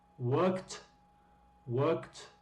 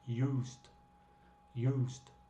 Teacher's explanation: worked, worked con t, con el ed pronunciado como t, y aquí es used, used con el ed pronunciado como un d